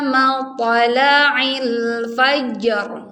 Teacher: karena RO di sini sebelumnya ada huruf berharakat fathah maka rnya harus dibaca tebal